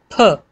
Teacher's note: फ बोलने के लिए पहले आप हवा रोकते हैं, फिर आप एक जोर से उसको निकालते हैं